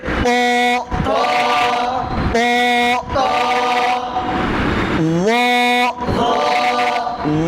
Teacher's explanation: ঠোঁট গোল হবে না, স্বাভাবিক রেখে, সোজা রেখে, ত উপরে, আওয়াজ উপরে